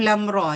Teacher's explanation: alif dengan ra ni pendek-pendek, lam tu yang 6. Alif lam ra 2 je. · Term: mad lazim harfi